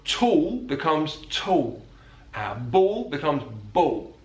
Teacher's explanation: He uses the vocalization of the dark L.